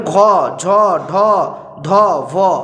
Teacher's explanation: এইগুলো কিন্তু উচ্চারণে আমাদের একটা আলাদাই গাম্ভীর্য আসছে, সেই জন্য এটা কিন্তু ঘোষ ধ্বনি।